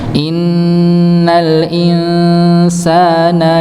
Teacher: kalau Nun dia bertasdid maka dia sempurna gunahnya sempurna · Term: Nun tasyid